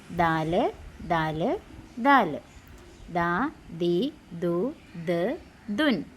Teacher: ദാലിന്റെ ഉച്ചാരണസ്ഥാനം നാവിൻറെ പുച്ചവും മേൽ മുൻപല്ലുകളുടെ ചുവടുമാണ്